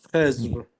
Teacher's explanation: in Persian, we pronounce D as Z.